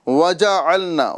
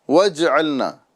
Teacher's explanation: وَجَعَلْنَا آپ دیکھیں یہاں پر جیم پر جو ہے زبر ہے، اور اگر ہم اس کو واو سے جوڑ کر پڑھیں گے تو یہ ہوگا وَجْعَلْنَا۔ یہ جیم ساکن نہیں ہے بلکہ یہ متحرک ہے